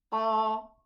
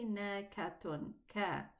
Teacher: the throat narrows and the furthermost part of the tongue rises up and the middle part of the tongue takes a concave shape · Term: elevated letters